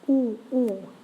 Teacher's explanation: Ooh, very, very open. So you bring your lips together into a round circle at the front, but you actually, ooh, have quite a bit of air inside your cheeks at the same time.